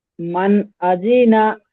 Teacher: নুন সাকিনের আওয়াজকে বিনা গুণনায় জাহির করে পড়তে হয় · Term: ইজহার হালকি